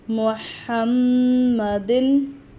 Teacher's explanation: मीम पर गुना करेंगे